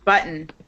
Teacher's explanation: okay that's how I pronounce it the T disappears